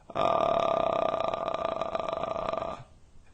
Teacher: vocal fry is the crackling sound you can make with your voice